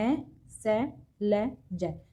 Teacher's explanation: जो जीभ है हमारी वो जो ऊपर वाले दांत हैं उनके पीछे वाले जो मसूड़े हैं उनको ये टच करती है जीभ, तो ये वत्स ध्वनि कहलाती है, जो मसूड़ों में जीभ टच करती है।